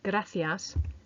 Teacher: And finally, number 4, the missing tricky sound was the letter C, which comes out a bit more like a th for the word gracias, meaning thank you.